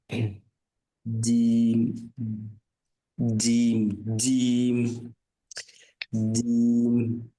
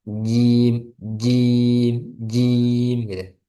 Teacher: Nah, جيم jadi agak ditekan terus di tengah.